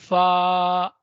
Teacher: فا حروف شفویہ اوپر کے دانتوں کے کنارے اور نچلے ہونٹوں کے تر حصے سے، جو ہونٹ کا حصہ ہے اس میں سے نکلتی ہے.